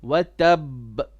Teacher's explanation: this is a ba with a shadda, and when we do qalqala on this, it's the higher level of qalqala.